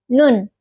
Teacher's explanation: Huruf nun makhrajnya itu di ujung lidah dengan gigi seri bawah. Nun.